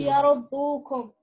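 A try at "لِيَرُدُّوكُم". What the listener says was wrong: There is Dhamma here. Okay, just it's hidden. Liyar, Liyu. Dhamma. This is Dhamma.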